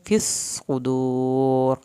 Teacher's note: صاد کی شد بھی ادا کریں اور صاد کو پر کریں ، صدور واو ساکن کو کھینچ کے اور را کو پر